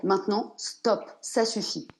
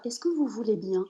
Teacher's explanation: Il ne donnerait pas le choix à l'autre, alors que la plupart des femmes vont garder ce point d'interrogation dans la voix « Est-ce que vous voulez bien ?» Depuis qu'on est jeune, nous les femmes, on nous apprend, et quand on est fille, à être docile, gentille, à ne pas faire de vagues.